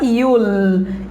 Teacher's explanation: Senão você vai falar com acento indiano, com sotaque indiano que fala yul. Yul é quando a língua ela tá mais achatada aí no céu da boca, no meio da boca, vai ficar yul.